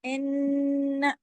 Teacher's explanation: ان نون پہ تشدید ہے ڈبل نون ہے اس پہ غنہ بڑا ہوگا اکمل ان لیکن اس کو ان کی آواز کے اوپر غنہ کرنا ہے نا کے اوپر منہ نہیں کھولنا ان ایسے آ کی آواز لگائیں گے تو الف لگ جائے گا اس کا مطلب ہے الف مدہ.